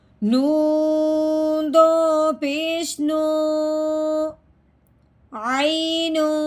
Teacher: تنوین میں ہم نے غنہ کرنا ہے، وہ بھی اخفا کا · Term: اخفا کا غنہ